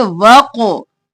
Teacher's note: वक़तलूहुम, वाव ज़बर क़ाफ, वक़, अलिफ वाली है, इसको नहीं पढ़ेंगे, क़ाफ मोटा और फिर क़लक़ला भी करेंगे